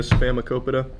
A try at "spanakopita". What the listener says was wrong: Remember, there's an N in spinach. Not spinach. Spinach.